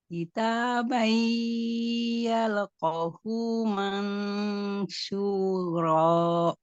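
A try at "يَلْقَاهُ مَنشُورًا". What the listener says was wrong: yalqo, qafnya ini panjang nih, ada tanda alif.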